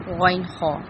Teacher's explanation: عین، ہا وسط حلق یعنی کہ حلق کے درمیانی حصے سے نکلتے ہیں، اور آخر میں غین، خا ادنا حلق یعنی کہ حلق کا منہ کی طرف والا حصہ سے ادا ہوتے ہیں